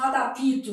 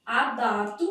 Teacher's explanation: Então não se insere vogal.